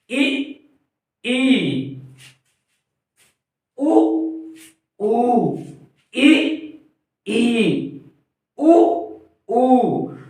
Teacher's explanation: जिनके उच्चारण में मुख बंद रहता है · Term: समृत स्वर